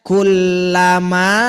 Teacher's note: Jangan dihapus huruf kafnya jadi lama.